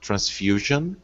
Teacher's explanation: the stress syllable is on the FU